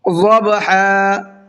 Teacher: ضبحا، ضاد کو پر کر کے پڑھنا ہے